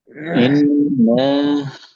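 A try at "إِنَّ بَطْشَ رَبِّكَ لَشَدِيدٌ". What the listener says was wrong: ভাই ইন না টান দিয়েন না, ইন্না বাতাশা রাব্বিকা লাশাদীদ।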